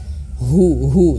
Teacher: hu-nya ini besar ya karena dia makhrajnya di pangkal tenggorokan. Hu jelas.